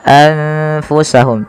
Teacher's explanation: nunnya disamarkan kepada huruf Fa maka menjadi anfusahum tidak lagi dengan jelas suara nunnya anfusahum tapi · nun sukunnya bertemu dengan huruf fa, maka nunnya disamarkan kepada huruf fa, maka menjadi anfusahum. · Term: bacaan Ikhfa, ikhfa